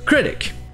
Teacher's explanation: dans le mot critic, la première syllabe est accentuée, mais les deux sons de voyelle c'est le son E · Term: le son court E